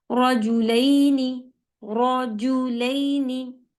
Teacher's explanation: रॉ heavy पढ़ा गया, फिर जीम के ऊपर एक हरकत है, उसे जल्दी पढ़ेंगे